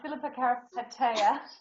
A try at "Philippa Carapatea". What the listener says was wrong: With a rolling R.